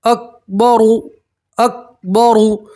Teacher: रा के ऊपर पेश रा को आप पूर पढ़ेंगे, मोटा पढ़ेंगे